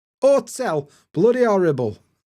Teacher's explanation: We're also not going to pronounce h at beginning of words.